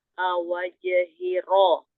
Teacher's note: Ro ujung lidah bertemu dengan langit-langit yang bergerigi bagian atas. Betul. Ujung lidah dan sedikit punggung lidah. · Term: huruf ro